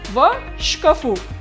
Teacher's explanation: Please pay attention that stress also shift from the first vowel to the last.